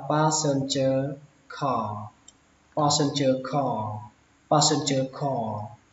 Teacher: nó nghe hơi giống như âm o, nó một nửa là o một nửa là a, nó nằm giữa nhau đấy các bạn